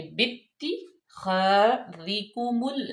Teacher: تا مشدد ہے اور با کو ہم تا میں سختی سے ملائیں گے